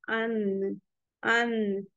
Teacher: तो यहाँ पे आपको दिखाया गया है कि 6 टीथ जो है हमारी, उसमें जाके ये लग रही है नून। तो नून में हमारी जो जबान का किनारा है वो ऊपर के दरमियानी दांतों के मसूड़े में जाके लगेगा, और कितने, 6 दांतों के मसूड़ों में जाके लगेगी।